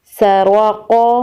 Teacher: قاف حروف قلقلہ میں سے ہے اس لیے وقف کی صورت میں قاف پر قلقلہ ہوگا۔